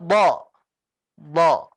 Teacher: pangkal lidahnya ikut naik. Jadi nggak hanya tengah lidahnya yang naik, tapi pangkalnya pun naik. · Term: huruf isti'la